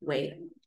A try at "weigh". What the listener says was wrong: Weigh. Not weight. O verbo é sem o T. Way. Igual walk my way. No way, Jose. palavras homófonas. Homófonas. Elas têm o mesmo som, mas não são homógrafas.